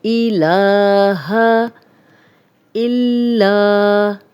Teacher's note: اللہ لا الہ، لام پہ کھڑا زبر ہے، اس کو 2 حرکات لمبا کریں گے، ہا کی زبر کو لمبا ہونے سے بچائیں گے۔ الہ الا، لام پہ شدد، لام کو 2 بار پڑھیں گے